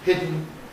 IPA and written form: ˈhɪdn̩ (hidden)